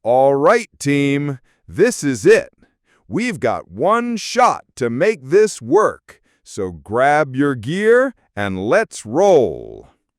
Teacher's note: The rhythm is steady at the start, then accelerates after we've got one shot and ends with a strong downbeat on roll.